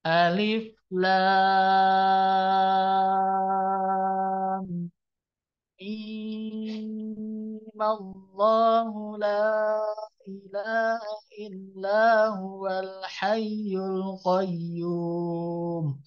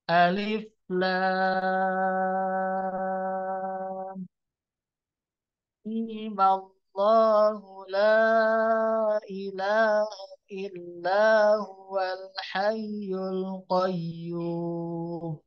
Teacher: Cara kedua, sama juga diberi harokat fathah, cuman pengucapan untuk huruf mimnya jadi 2 harokat panjangnya, berkurang. Yang tadinya 6, sekarang jadi 2 harokat.